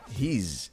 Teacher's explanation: the S in he's sounds like a Z, he's, because it's between voice sounds. Voice sounds make your vocal cords vibrate, like zzz, versus unvoiced sounds like s.